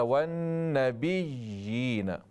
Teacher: یا کی آواز ہو، حمزہ کی آواز نہ ہو یہاں پر